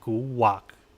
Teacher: So it just a hold the a and then dip with a k, and then that's how you kind of pronounce it.